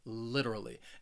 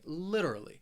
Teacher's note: has four syllables and the stress is on that first syllable that third syllable it has that schwa